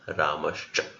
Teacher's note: if visarga is followed by cha, then visarga is replaced by sha. So Ramah plus cha, Ramascha.